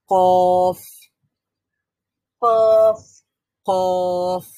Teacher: একেবারে যে উপরের যে নরম জায়গাটা রয়েছে, উপরে যে নরম জায়গাটা রয়েছে সেখানে গিয়ে জিহ্বার গোড়াটা লাগবে। · কফের মাখরাজটা হচ্ছে জিহ্বার একেবারে রুট অফ দ্য টাং, একেবারে জিহ্বার একেবারে গোড়া যেটা রয়েছে, সেই গোড়াটা অন দ্য সফট প্যালেট, একেবারে নরম যে প্যালেটটা আছে আমাদের, তালুর যে নরম অংশটা আছে সেখানে গিয়ে টাচ করবে, সেখানে গিয়ে লাগবে।